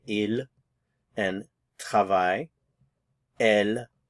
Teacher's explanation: notice the pronunciation we're not pronouncing the consonants at the end